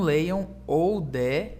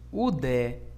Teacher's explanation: Não leiam oudé e sim udé, porque ômicron Y tem som de U.